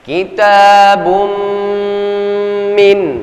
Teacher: tanwin pada huruf ba bertemu dengan huruf mim, ya. Ada hukum yang harus kita berlakukan, yakni idgham bi gunnah. 2-3 ketukan.